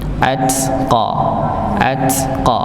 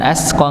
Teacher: huruf ta tempatnya ujung lidah bertemu dengan gusi bagian atas ujung atau ujung gusi bagian atas atau Pangkal gigi seri atas